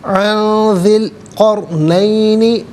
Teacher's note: ذال کے نیچے زیر اسے القرنین کے لام ساکن کے ساتھ ملائیں گے، درمیان میں سے الف علی حمزہ کو حذف کریں گے۔ قرنین میں آپ دیکھیں را ساکن ما قبل قاف پر زبر، را ساکن کو پر کر کے پڑھا جائے گا۔